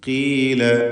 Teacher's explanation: فلما جاءت قيل أهكذا قيل ഖാഫ് ഇസ്തിഅലാൻ്റെ അക്ഷരമാണെന്ന് നാം മനസ്സിലാക്കി. എന്നാൽ കസ്റായതുകൊണ്ട് ഏറ്റവും കുറഞ്ഞ തഫ്ഖീം കൊടുത്ത് ഉച്ചരിക്കുക.